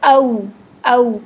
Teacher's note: हम पूरा हंठ गोल करके पूरी चोंच की तरह मुंह के बाहर लेकर आएंगे। क्योंकि हमने इसकी अभी फिलहाल आवाज नहीं निकालनी।